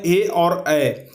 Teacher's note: सिर्फ ए और ए दो ही ऐसे वर्ण हैं जिसका उच्चारण कंठ और तालु दोनों मिल करके होता है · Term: कंठ तालव्य